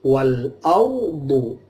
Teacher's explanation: Arduhas samawat, ma itu 2 ketuk, wa itu juga 2 ketuk, wal ardu ada ro mati, sebelumnya ada harokat fathah dibaca tebal, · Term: tafkhim